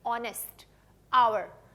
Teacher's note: जब आप इंग्लिश में इन वर्ड्स को प्रोनाउंस करते हैं, आप ह साउंड नहीं यूज करते, आप अ साउंड यूज करते हैं.